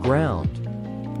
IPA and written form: ɡraʊnd (ground)